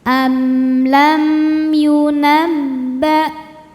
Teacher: Hamzah suaranya tertahan ya karena dari segi suara sifatnya syiddah. · Sebab mim sukun tidak menghadapi mim atau ba melainkan menghadapi ya. Cara bacanya mim dibaca jelas. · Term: izhar syafawi